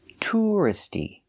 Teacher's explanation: I say touristy keeping the stress on the first syllable